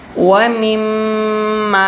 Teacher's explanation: میم یہاں پر غنہ کرنا ہے، آپ نے منہ کو بند کرنا ہے تھوڑی دیر کے لیے